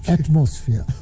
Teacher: I pronounced the word atmosphere with the accent of the second syllable